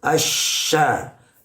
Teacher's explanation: Nah, kesalahan itu ketika melafalkan shin, asya, tidak asya, jangan sampai bergerak bibir ini karena makharijul hurufnya atau makhrajnya shin berada di lisan atau di lidah, bukan di bibir. Sehingga pelafalannya itu asya, tidak boleh asya, gitu ya.